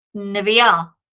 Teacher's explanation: when we add the a ending, that kamates reduces all the way down to a simple vocal schwa here. And the reason for that is the accent has moved.